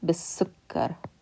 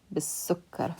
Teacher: And the lam we're skipping over because we can't pronounce it because the next letter is a sun letter. So we're going to connect the ba with the kasra, b, to that sin, bis.